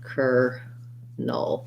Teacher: it's just an er and a null with a dark l with a schwa